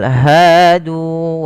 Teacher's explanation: kedua-duanya mad thabi'i panjangnya sama yaitu fathah bertemu alif dan domah bertemu dengan huruf wau